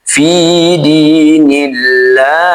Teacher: lafaz Allah di sini dibaca tipis. Ditipiskan karena didahului kasrah